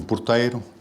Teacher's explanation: O fenómeno de redução átona, portanto, que é típico do português europeu.